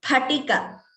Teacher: So please remember, wherever we see Phalam, here Spatika, we pronounce it as Pa only. There is no F kind of sound.